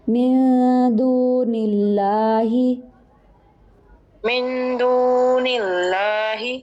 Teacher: لام اسم جلالہ یعنی اللہ کا جو لام ہے اس کو باریک کریں گے کیونکہ نون کے نیچے پیچھے زیر ہے. اگر تو پیش ہوگا یا زبر ہوگی تو یہ لام موٹا ہوگا، زیر ہوگی تو یہ پتلا پڑا جائے گا، باریک ہوگا.